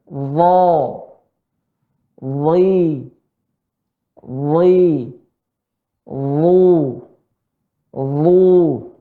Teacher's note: Ya, pada dha tidak dinaikkan.